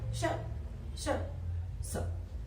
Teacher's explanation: अघोष मतलब थोड़ी कम आवाज निकल रही है, श्वास भी हमारी थोड़ी धीरे चल रही है